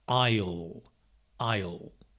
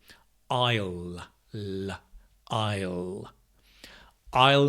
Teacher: with will we make a contraction I'll, I'll it's got that lovely dark L